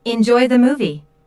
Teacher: notice how the intonation Rises on movie this is said in a friendly way and is followed by an exclamation